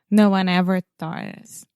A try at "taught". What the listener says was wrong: Taught Yeah, a lot of times, I'm not sure why you want to put a TH in the beginning of the word. Yeah, it's just taught.